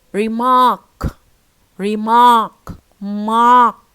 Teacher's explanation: second syllable, which is stressed, as you see, and the vowel is very strong and very loud and a long one